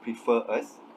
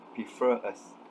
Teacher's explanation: the interviewee did not insert the r sound, basically pronounced it as prefer us, where usually in received pronunciation we would pronounce it as prefer us.